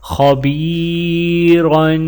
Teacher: را کے اوپر دو زبر ہیں، تنوین کریں گے اور را کو موٹا پڑھا جائے گا. خبیرن.